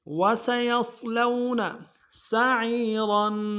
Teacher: واو کو نم سے ادا کریں گے، یا کو صاد کے سامنے لانا، صاد کو موٹا ادا کریں گے، لام کو واو کے سامنے لانا، واو لین بغیر کھینچے پڑیں گے.